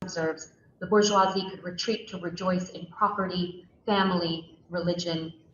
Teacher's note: So notice there's not a lot of melody to her voice. There's no like rising intonation.